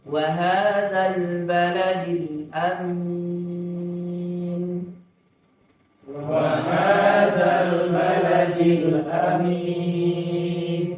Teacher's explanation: Jadi A-nya harus panjang, mimnya harus panjang. Tapi kalau A-nya pendek, mimnya yang panjang aman nanti.